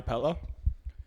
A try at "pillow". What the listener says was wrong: Dude, you're saying it's almost like you're saying Peloton, but you're saying pillow. It's not It's like a pill.